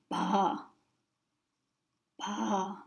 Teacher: it's slightly between a P and a B, and it depends on the word and on the combination, so it might be slightly different sometimes.